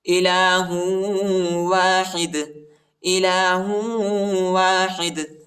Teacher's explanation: یعنی دال کو جھٹکے کے ساتھ پڑھیں گے · ہا کو واو کے ساتھ ملائیں گے اور غنہ بھی کریں گے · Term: قلقلہ